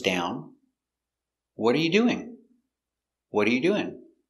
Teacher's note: another example of an information question question word what so the intonation goes down